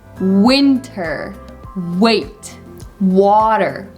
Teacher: the sound W, is pronounced when you're trying to round up your lips and kind of like you're trying to make this sound.